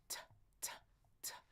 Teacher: The T also on the bump, tongue on the bump. Explode it like the D, duh, duh, duh. But no voicing here.